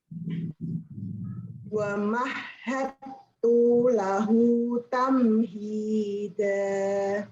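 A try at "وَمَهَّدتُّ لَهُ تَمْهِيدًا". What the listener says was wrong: Tunya pendek ya. Wa mahhattu lahu. Ya, jangan dipanjangkan.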